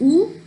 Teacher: It is back, close, and rounded vowel.